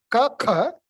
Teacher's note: you have to have that little harsher sound, ka, from deep within the throat